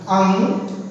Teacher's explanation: अं का प्रयोग नाक से करते हैं